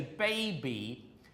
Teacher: the B is half voiced. The voicing starts halfway, and so we've got to get used to, when we're learning these languages, to make a fully voice from beginning to end.